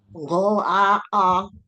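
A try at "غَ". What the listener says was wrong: pendekan gho-nya gho-a-a.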